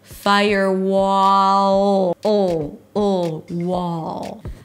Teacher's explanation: Open your mouth for the ahs and father, wah, and then bring the tongue up again for the dark L